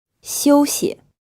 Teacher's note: This word is pronounced in the first tone, and the second syllable is unstressed.